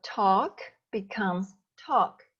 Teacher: At the end of the verb, if you hear a voiceless sound like this, k, then ed is pronounced t, also voiceless. So talk becomes talked.